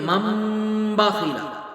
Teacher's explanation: نون ساکن نون تنوین کے بعد اگر با آ جائے تو نون ساکن نون تنوین کو میم سے بدل دیتے ہیں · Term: اقلاب